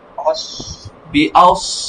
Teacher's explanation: হা চাপ হবে, আপনার কণ্ঠনালীর মধ্যখান থেকে একটু চাপ দিবেন।